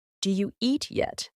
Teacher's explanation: eat yet what you'll actually hear is do you eat yet did you gets reduced to do you that's why it sounds fast because the sounds are being combined and shortened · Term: reduction, Reduction